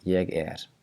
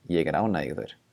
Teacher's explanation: the R is not going to be devoiced in the word er, because there's a word that comes after it